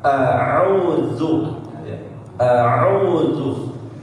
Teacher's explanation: alif dan ain harus pisah ya, pembacaannya apa, cara melafalkannya harus berbeda ya. Terlebih huruf ain yang harus dimaksimalkan.